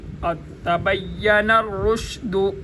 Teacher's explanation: را کے اوپر پیش ہے لہذا را موٹا ہوگا